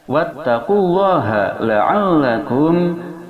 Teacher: ha, makharijul hurufnya berada di pangkal tenggorokan, yaitu dekat dada